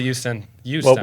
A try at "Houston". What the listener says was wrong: He doesn't say H's. Say huge.